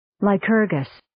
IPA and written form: laɪ'kɜːrgəs (Lycurgus)